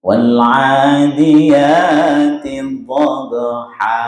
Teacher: Kalau fathatain berarti tidak panjang. Begitu dihilangkan tanwinnya diganti dengan mat atau dipanjangkan.